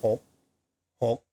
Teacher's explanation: There is a K ending. It's actually a gogai, but the gogai, it's not really pronounced. You don't say hok or hog.